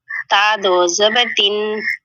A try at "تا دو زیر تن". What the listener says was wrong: نہیں تا دو زیر ہے نا، نیچے کی جانب ہے حرکات، تو ہم نے اس کو تا دو زیر تن، تا دو زیر